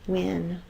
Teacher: It's W with a lot of extra air, so it's the WH.